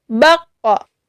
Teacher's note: kalau sukun, qaf ini menjadi qalqalah, mempunyai pantulan.